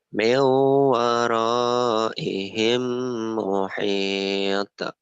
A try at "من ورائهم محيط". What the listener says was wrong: bukan muhite, muhito gitu kan to o Kalau muhite itu tak miu miu wara miu waraihim muhito muhito gitu.